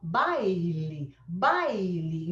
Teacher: Então, você sabe que o A é mais forte, o I é mais fraco. Ela é a semivogal.